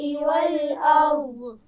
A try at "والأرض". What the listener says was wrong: والارض نہیں پڑھیں گے بیٹا، قلقلہ نہیں کریں گے اور اس پہ کوئی حرکت بھی نہیں پڑی جائے گی، ہم ساکن کریں گے، ٹھیک ہے. والارض.